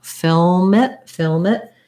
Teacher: rather than trying to break after film before it you could think of that as being something more like filmmit film it that might help you get that lm combination if